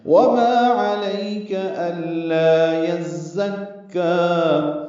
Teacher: نرمی سے پڑھیں گے، عین وسط حلق سے، کاف باریک پڑھیں گے۔